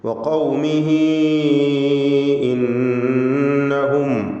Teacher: ഹ ദമീറിന് ദീർഘം വരുന്നു, മദ്ദു സിലത്തുൽ കുബ്ര നൽകി.